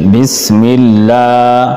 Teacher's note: لفظ اللہ کے لام کو باریک پڑھیں گے کیونکہ اس سے پہلے زیر ہے